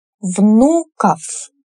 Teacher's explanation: Внук, внуков. Here о is unstressed, so we reduce it.